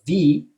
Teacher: I use my bottom lip and my top teeth, which is a labiodental sound